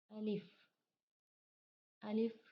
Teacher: अलिफ मुंह के खाली हिस्से से अदा होता है